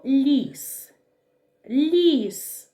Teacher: у слові ліс також два приголосних звуки але звук ль м'який а звук с твердий